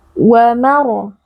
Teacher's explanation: huruf ro sukun sebelumnya berharokat fathah merupakan huruf tafkhim dibaca tebal dengan mengangkat pangkal lidah